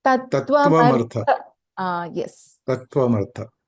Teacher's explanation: So there is no a dirgha here.